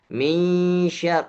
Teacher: huruf sya semuanya keluar angin desisnya keluarnya tersebar ke mana-mana